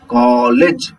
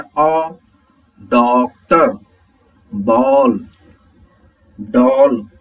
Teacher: यह आ और ओ के बीच की ध्वनि है। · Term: आगत ध्वनिया